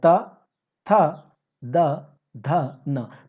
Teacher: तो ये जो आपका जिह्वा है, आपका जिह्वा का आगे वाला पार्ट आपके दाँतों से टच हो रहा है, तब जाकर के ये उच्चारण निकलता है त वर्ग का। · आपका जिह्वा लगेगा जैसे कि वो दाँत से टच हो रहा है।